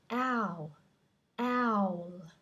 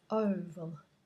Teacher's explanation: with owl, it's like an A, so your mouth has to be open. It's different to oval, which is quite closed.